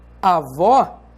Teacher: Por exemplo, se você diz avó, você sabe que esse O tem um timbre aberto e não um timbre fechado. E você sabe também que vó é a sílaba tônica da palavra avó.